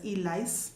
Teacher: things like rice in isiZulu are pronounced as lice. So it always becomes an L. Yes, it always becomes an L because the R does not exist.